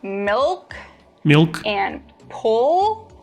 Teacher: Contrast the light L. When you produce the dark L, the back of your tongue bunches.